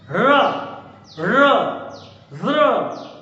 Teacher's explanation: रा को हम कहते हैं लुंठित, लुंठित व्यंजन कहते हैं। रा बोलते समय क्या होता है? जीभ जो है उसमें झंझनाहट होती है।